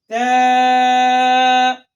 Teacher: زبان کی نوک اور اوپر کے دانتوں کی جڑ سے ادا ہوتا ہے